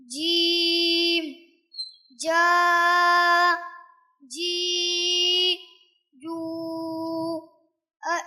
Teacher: زبان کا بیچ والا حصہ اوپر کے تالو سے ملنے سے جیم ادا ہوتا ہے۔ جب جیم ہم ادا کریں گے تو اس کا خاص خیال رکھنا ہے کہ ہونٹوں کو گول نہیں ہونے دینا ہے، اور اسی طرح سے زبان کا بیچ والا حصہ لگے۔